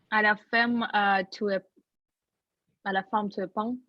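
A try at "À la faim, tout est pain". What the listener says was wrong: Смотрите, когда у нас носовой, М не может звучать. À la fin, Tout est pan.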